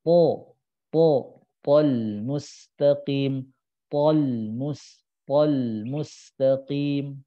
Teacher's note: Pangkal lidahnya angkat agar suaranya tebal dan makhrajnya betul. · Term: huruf po